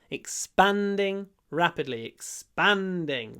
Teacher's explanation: Long n before the d.